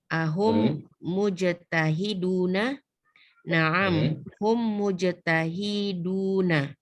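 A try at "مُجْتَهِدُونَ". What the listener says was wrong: Hinya pendek, Bu. Mujtahiduna.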